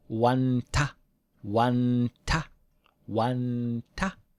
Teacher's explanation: we pronounce it in the same place we make a T